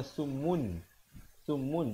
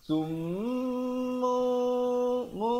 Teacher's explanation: Summu, kemudian di situ iqlab tanwin, mim tanwin di depan bertemu ba, hukumnya iqlab. Tukarkan bunyi tanwinnya ataupun nunnya itu kepada mim. Asalnya summun, summun, tapi bila datang ba jadi summu mu.